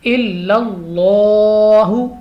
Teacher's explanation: تو یہاں پہ چونکہ زبر آ رہی ہے، لام آف اللہ سے پہلے حرف پر زبر ہے، تو ہم نے اس کو پر پڑھنا ہے۔ الا اللہ، لام کو تھوڑا لمبا بھی کریں گے کیونکہ کھڑی زبر ہے